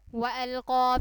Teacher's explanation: قاف کے اوپر کھڑی زبر بھی ہے اور قاف موٹے حروف میں سے بھی ہے، اس لیے ہم نے اس کو ایک الف کے برابر لمبا کر کے پڑھا اور موٹا کر کے پڑھا.